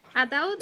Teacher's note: Ataúd es una palabra que tiene la fuerza de pronunciación en la última sílaba. Termina en D.